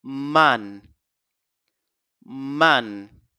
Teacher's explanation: vous allez sentir un peu une certaine vibration au niveau des narines